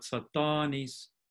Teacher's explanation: If we add the affix, which changes it into an adjective to it, now that affix causes stress to move one syllable further over, and now the initial syllable is no longer stressed, so it becomes short, but the second syllable is now stressed and therefore the vowel lengthens there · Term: stress-induced length alternations